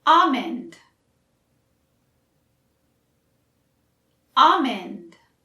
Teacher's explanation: It technically isn't wrong if you pronounce the L, almond, but it's usually silent for us. Also, notice I don't say almond.